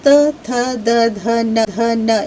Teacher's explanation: आप यदि इन्हें बोल के देखेंगे तो त थ द ध न इन सभी के को उच्चारित करने में आपकी जीभ दांतों के पिछले भाग का स्पर्श करती है। तो ये हुए दंत्य वर्ण